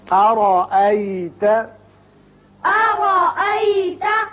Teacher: را کو اچھی طرح پر کریں گے